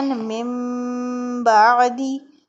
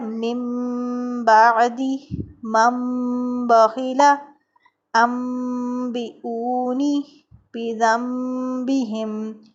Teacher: نون ساکن اور تنوین کو ہم میم سے بدل کر غنّے کے ساتھ پڑھتے ہیں، اور علامت کے طور پر وہاں چھوٹی سی میم بھی لکھ دی جاتی ہے، مثلا من بعدی، ٹھیک ہے نا۔ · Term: اقلاب